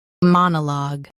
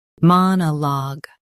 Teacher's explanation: US stresses ma. UK stresses mon.